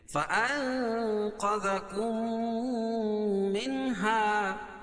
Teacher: منہا میں اظہار حلقی، کیونکہ نون ساکن کے بعد حروف حلقی کے 6 حرفوں میں سے ہا ہے